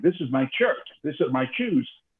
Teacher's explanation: I would say things like, this is my shirt, this is my shoes. In Spanish, there is no SH sound, right? So it's always a hard CH.